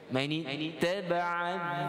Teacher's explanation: Jadi alif ini apabila bersambung, bacaan itu wasal, dia tidak dibaca. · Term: alif wasal